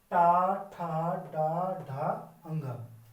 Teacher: दांतों से जस्ट थोड़ा सा ऊपर वाला हिस्सा होता है उसको छूके आती है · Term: मूर्धन्य